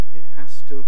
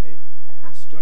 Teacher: you pronounced it it has to with a glottal stop